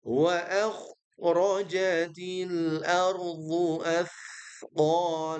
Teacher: Baik, di sini pastikan huruf kha-nya ya, dia menebal ya